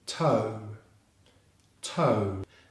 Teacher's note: starts with a strong /t/ consonant sound followed by the /oʊ/ diphthong sound as in no